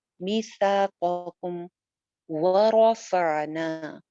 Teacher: میثاقکم ورفعنا، و ہونٹ گول، واو پہ آپ کے ہونٹ گول ہوں گے، را جو ہے یہ موٹی پڑی جائے گی کیونکہ زبر کے ساتھ ہے، ورفعنا، آئین کا مخرج ہم پڑھ چکے ہیں کہ نرمی کے ساتھ زبان کو پیچھے حلق میں بھیج دیتے ہیں۔